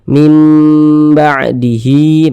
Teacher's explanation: didengungkan jadi suaranya itu kita tahan kita panjangkan sepanjang dua harakat · Hi dibaca panjang, ini juga mad silah qasirah